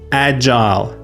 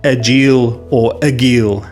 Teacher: Soft J sound like the J in jump. Long I sound like the I in while or mile. Stressed on the first syllable.